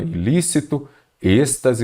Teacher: você observa que a antepenúltima sílaba é a mais forte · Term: proparoxítona